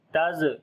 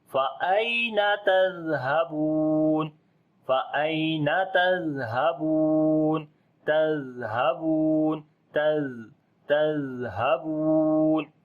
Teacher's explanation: آواز کو جاری کریں گے اور نرمی آئے گی اس کے اندر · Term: صفت رخاوت